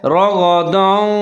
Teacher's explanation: را کے اوپر زبر ہے، اس کو آپ نے موٹا کر کے پڑھنا ہے اور غین اس کو بھی آپ نے موٹا کر کے پڑھنا ہے۔